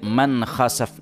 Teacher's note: hukum harusnya izhar halqi, dibacanya seperti ada ikhfa sedikit masuk